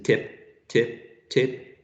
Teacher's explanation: in terms of the lip rounding when you say in as in tip tip tip your lips are not rounded